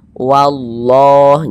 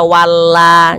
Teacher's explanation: lafaz Allah juga dibaca tebal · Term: tabkhim